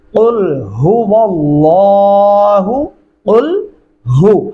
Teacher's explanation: भारी आवाज से सीने से निकालेंगे और लाम को मोटा पढ़ेंगे